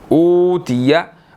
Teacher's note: अलिफ के बाद वाव मद्दा है, इसको हमने 1 सेकंड थोड़ा सा खींचना है